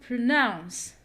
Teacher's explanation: me how do you pronounce pronounce because it's a verb and we stress the second part or the second syllable